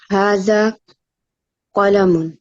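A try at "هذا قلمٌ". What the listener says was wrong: Very good.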